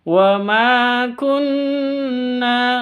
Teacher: di sini ada Nun tasdid dengung gunah musyaddadah dengung dua ketuk